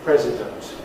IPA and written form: ˈprezɪdənt (president)